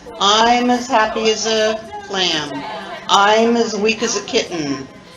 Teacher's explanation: Can you hear the way that I'm pronouncing as reduced to is? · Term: reduced form of as